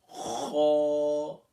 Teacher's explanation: حروف مستعلیہ میں سے پہلا لیٹر ہے اور اس کو فل ماؤتھ کرنا ہے